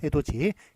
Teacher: 디귿입니다만 그 뒤에 있는 이를 만나가지고 그게 지로 발음이 되지 않습니까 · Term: 구개음화